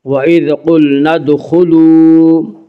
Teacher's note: ادخلوا دال میں قلقلہ ہوگا، دال حروف قلقلہ میں سے ہے